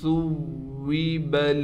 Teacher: سا کے بعد واو پر تشدید ہے، لہٰذا واو کے اوپر تھوڑا ٹھہراؤ کیا جائے گا۔